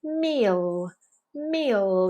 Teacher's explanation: press that tongue tip very firmly into the bump behind the teeth